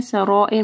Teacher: سرائر میں مد ہے، اس کے بعد حمزہ ہے تو 4 سے 5 حرکات کے برابر اس کو لمبا کرنا ہے۔